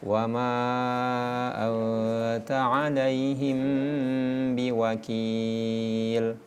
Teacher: ketika huruf mim mati ketemu dengan ba itu dibaca dengung kadar panjangnya 2 sampai 3 harokat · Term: ikhfa syafawi